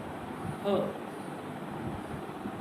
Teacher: ह और वावल्स में इतना फर्क है कि वावल्स वॉइस्ड होते हैं और ह वॉइसलेस। · नेक्स्ट हमारा साउंड है ग्लोटल। ग्लोटल यानी गले में जो ग्लोटिक्स होती है उसकी वजह से सीधा ही ध्वनि निकलती है